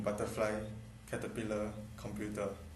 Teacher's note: The flapping of intervocalic t in butterfly, caterpillar, computer.